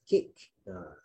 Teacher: huruf kaf ni bila dia mati maka akan ada angin. Macam kita sebut bahasa Inggeris.